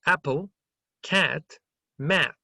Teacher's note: Es como una AE, es muy abierta, comparada con esta, que esta es A.